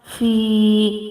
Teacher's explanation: It's ya sakin, so we will make fi 1 second long.